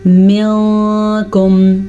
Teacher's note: نون کو چھپانا ہے کیونکہ یہاں پہ اخفاء کا قاعدہ ہو رہا ہے